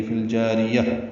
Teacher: فی الجاریہ میں فا کو لام سے ملا دیں گے، اظہار قمری ہے. جا الف مدہ ہے، را باریک ہے، یا کو تا سے ملا دیں گے، وقفاً تا مربوطہ ہا میں تبدیل ہو جائے گی.